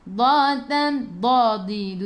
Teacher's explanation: tepi lidah menyentuh gigi geraham atas, tepi lidah bukan hujung lidah, tepi lidah menyentuh gigi geraham atas, hujung lidah letak belakang gigi taring.